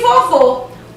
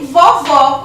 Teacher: o acento circunflexo deu um som mais fechado para a vogal, e vovó, onde o acento agudo deu um timbre mais aberto para essa vogal